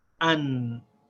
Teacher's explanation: We pronounce the alif with its short vowel, and then we join it without any stop, the sound of the noon.